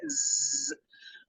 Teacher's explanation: یہ زا ہے، حروف سفیریہ میں سے اس میں سٹی والی آواز آئے گی، مطلب تیز آواز آئے گی،